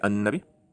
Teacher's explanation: There's an L which turns into an N